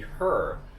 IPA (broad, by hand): ər